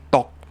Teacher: we're going into the k position, but we're not saying the k.